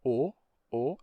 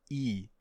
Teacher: segundo elemento do ditongo então no caso do Oi você tem você começa com uma vogal com lábios arredondados o o e você termina com i se você fundir as duas então você vai terminar tendo e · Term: ditongo Oi